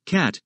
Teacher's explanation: is pronounced with an open mouth and a slightly lower jaw it is a low front vowel meaning that it is produced with the tongue in the front of the mouth and low in the mouth · this vowel in the word cat is pronounced with an open mouth and a slightly lower jaw it is a low front vowel meaning that it is produced with the tongue in the front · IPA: æ